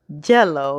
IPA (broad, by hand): ʤɛləʊ